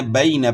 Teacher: عوانم بین، تو تو یہاں یائلین ہے، یائلین کو آپ نے معروف پڑھنا ہے اور نرمی سے پڑھنا ہے